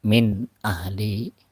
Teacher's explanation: nunnya terbaca dengan jelas, berbeda dengan idgham biguna, ya, disertai dengan guna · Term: izhar